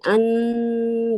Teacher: Jadi bacanya pasti ee hampir ke nun. Hampir nunnya hampir kedengaran tapi bukan eng ya. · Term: ikhfa